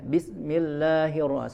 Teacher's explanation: huruf sin itu, ya, memiliki sifat hams, ya. Hams itu mengeluarkan udara atau mengeluarkan nafas, ya. Ya, ya, maka harus sempurna, tidak boleh tidak mengeluarkan udara atau nafas.